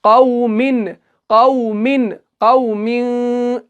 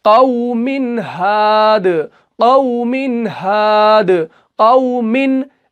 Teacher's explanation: तनवीन के बाद हा आ रहा है और कायदा जो है वो इजहार का है, तो यहां पे इजहार होगा। तनवीन को कैसे पढ़ेंगे, पूरा पढ़ेंगे, जाहिर करके पढ़ेंगे।